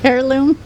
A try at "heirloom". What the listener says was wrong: There's an H there.